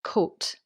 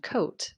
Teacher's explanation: the short coat as a Scottish person might say it, and coat as an English person might say it